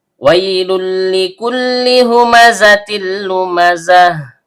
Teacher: Ha tenggorokan bagian bawah. Mim huruf bibir. Zai ujung lidah bertemu dengan gigi seri bawah. · Karena lam yang pertama berharakat dommatain atau tanwin bertemu dengan lam yang kedua, maka terjadi hukum bacaan idgham bila gunah. Jadi bunyi tanwinnya atau bunyi n-nya dilebur ke huruf lam tanpa dengung. · Waw huruf bibir, karena wawnya berharokat fathah diikuti ya sukun yang keluar dari tengah lidah naik memantul ke langit-langit, maka di sini terjadi bacaan lin. Ada dua lam yang keluar dari ujung lidah bertemu dengan langit-langit bagian depan. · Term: idgham bila gunnah